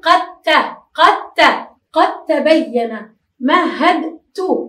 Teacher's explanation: الأصل أن نقول، يعني هو في التهجئة نقول مهدت، لكننا بسبب التجانس نقول مهدت، والدال لا ننطقها كدت، كدت. الدال لا ننطقها لأنها أيضا ساكنة والحرف اللي بعدها يجانسها فندخلها أو نضغمها فيه